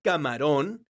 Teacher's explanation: La palabra camarón es una palabra aguda porque su sílaba tónica es la sílaba ron. Esta palabra termina con la consonante N, entonces tiene un acento ortográfico que se escribe en la vocal de la sílaba tónica, que es la letra O.